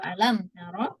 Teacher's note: Ro-nya yang pertama dengan yang kedua disamakan. Sama-sama tebal.